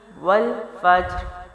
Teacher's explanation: اب جیم اور را جو ہے وہ کیا ہوگا؟ را کی زیر بھی ختم ہو جائے گی، جزم لگے گا، تو جیم کو باؤنس بھی کرنا ہے، را کو موٹا بھی کرنا ہے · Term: قلقلہ